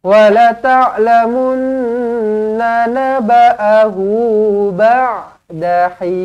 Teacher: huruf ain, tekan dekat tengah-tengah kerongkong